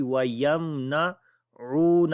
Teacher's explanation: او کو لمبا کریں گے، واؤ مدہ ہے